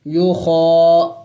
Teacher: یا پیش یو، خا کڑی زبر خا، خا موٹے حروف میں سے، اس کو موٹا کر کے ادا کریں گے